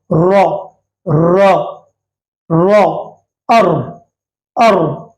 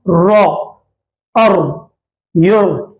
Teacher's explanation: जबान की नोक ऊपर के दांतों के, जबान की नोक की पीठ ऊपर के दांतों के मसोड़ों को लगाकर, आप जबान ऊपर के दांतों के मसोड़ों को लगाएं और जबान को मोटी कर दें। रा की आवाज पुर निकलेगी।